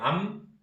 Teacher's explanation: 모음을 아라는 모음을 붙였을 때 암 하고 있으면 입술이 탁 닫힌다고. 요 포지션에서 입술이 닫혔을 때 파란 길이 차단이 되겠죠. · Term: 미음